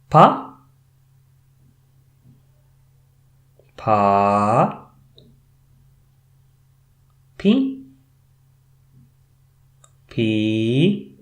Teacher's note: Pa as bilabial stop. Pa is pronounced by closing both your lips slightly and releasing them immediately.